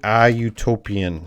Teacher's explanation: This will have the Y sound. It sounds like a vowel sound, but you is going to be treated like the consonant sound. So we say a utopian dream.